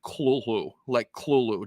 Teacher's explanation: In his own writing, he says that that name is supposed to be pronounced without the th. It's all supposed to just be heavy, guttural KL kind of sounds.